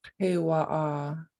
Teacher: that underlined K in kewa'a is in the back of your throat. And it needs to sound different from the K and ka.